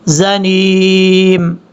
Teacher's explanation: یہ جو زا ہے سیٹی کے ساتھ پڑھا جائے گا